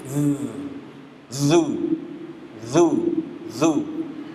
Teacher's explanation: keluarnya dari ujung lidah keluar bertemu dengan ujung gigi seri ujung gigi nih nih ujungnya nah lidah kita ke situ tuh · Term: huruf dalal